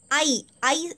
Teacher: അപ്പോൾ ഐ എന്ന് പറയുമ്പോൾ ഗ്ലൈഡ് ചെയ്ത് പോകുന്നതാ. അപ്പോൾ ഡിഫ്തോങ് ആണ്.